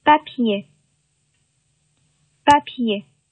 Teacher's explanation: 这个送气量是比较大的啊，这一点，不作为一个语音规律，但是呢，是法国人的一个习惯